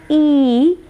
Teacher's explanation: It is again unrounded. We use again the front part of the tongue, and the height is closed form.